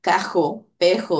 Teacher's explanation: La R, velar. En Puerto Rico, pues hay ese sonido de cajo, pejo, ¿verdad? Que es un sonido velarizado.